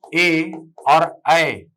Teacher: ए और ऐ, ये दोनों कंठ तालव्य ध्वनि है